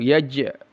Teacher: Jim yang sukun qalqalah yaj dipantulkan